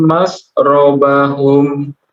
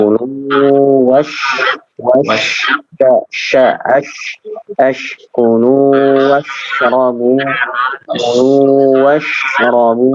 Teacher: Suara huruf sya-nya kurang menyebar ya, kurang menyebar.